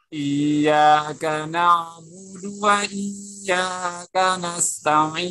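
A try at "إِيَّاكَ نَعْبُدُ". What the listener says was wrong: Tekan lagi ya-nya Pak. Kasih iya, iya. Tidak ditekan, tapi tekan lagi.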